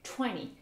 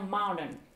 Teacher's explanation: Vous avez le T qui n'a pas été prononcé et c'est le N qui prend le dessus.